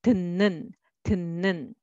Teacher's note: 읃 sound will switch to 은 sound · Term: nasalization